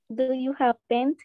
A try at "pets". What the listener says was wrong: Pets, sin N, pets.